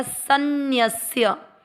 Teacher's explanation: इसको सन्य श्य नहीं करना है आधा स संतों वाला है सय पढ़ा जाएगा श्य नहीं